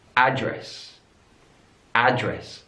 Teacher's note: Stress is on the first syllable.